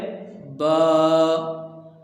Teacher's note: یہ دونوں ہونٹوں کے تر حصہ سے ادا ہوتا ہے